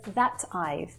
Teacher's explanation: She says that I've, and that is with a tap T sound.